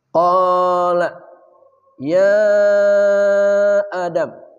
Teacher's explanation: Mad tabi'i bertemu hamzah, di lain kata namanya mad jaiz munfasil. Biasa disingkat mad munfasil. Panjangnya 4 harakat.